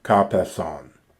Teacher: So here we have what would be kata epeson or katepeson, but the alpha has been dropped and you don't have the augment, and the tau of kata has been assimilated to the pi of peson, so therefore resulting in the form kapeson, from katapipto, to fall down or downwards.